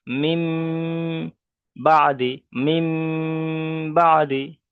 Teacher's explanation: নুন সাকিনকে মিমের দ্বারাই পরিবর্তন করে একালি পরিমাণ গণনা করে পড়তে হবে।